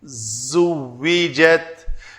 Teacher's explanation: زا کے لیے دونوں دانت جوڑے اور پیچھے سے زبان آئی تو اس نے ایک بز سیٹی سی بنائی